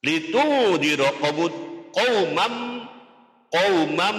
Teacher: Litundira qaumam itu di atas mim ada fathah 2 namanya fathaten disebutnya tanwin. Bertemu dengan huruf mim hukumnya dibaca idgham bihunna. Artinya masuk dengan mendengung.